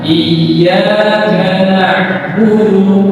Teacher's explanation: huruf Ain itu tidak tertahan